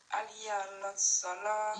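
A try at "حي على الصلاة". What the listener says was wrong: Non, non. On dit pas Aliya la salat. Faut dire ha. Faut dire ha. Hayya. Faut dire hayya. Hayya ala salat.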